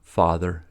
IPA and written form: fɑðər (father)